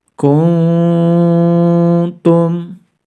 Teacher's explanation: nun sukun nya harus dibaca samar-samar diikuti dengan dengung sebanyak dua sampai dengan tiga harokat baru setelah itu mengarah pada makhroj huruf tagnya yaitu lidah kita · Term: ikhfa